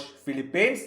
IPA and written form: ˈfɪlɪpiːnz (Philippines)